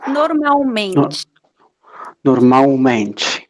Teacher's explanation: em português nós não pronunciamos o L, então ele soa como U.